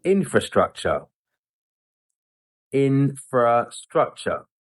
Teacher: they drop that internal R sound after the first syllable and they just say infrastructure rather than infra. · he's stressing this first syllable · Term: primary stress